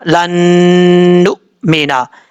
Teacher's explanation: نون کے اوپر شد غنہ کریں گے ایک الف کی مقدار